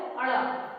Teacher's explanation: આ થડકાર વાળો અળ જે છે એમાં જીભનું ટેરવું પેઢાના ઉપલા ભાગ પાસે જઈને પાછું આવે છે.